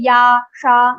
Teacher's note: ya and sha will also be pronounced from your talu, roof of your mouth. So let's say ya, sha, you will see your tongue is touching your talu.